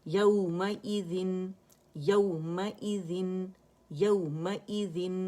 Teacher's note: حمزہ کسرہ ای ہے اور یہ اقص الحلق سے ہی ادا ہوگا